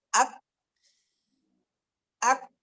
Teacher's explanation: Kaf ini tertahan suara dulu, sidang. Tapi ada hams setelah itu.